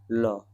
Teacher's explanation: तो जिन व्यंजन वर्ण का उच्चारण करते समय जीवा वर्ष भाग को स्पर्श करते हुए रुक जाती है और निकलने वाली वायु जीवा किनारे बाहर निकलती है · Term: पार्श्विक व्यंजन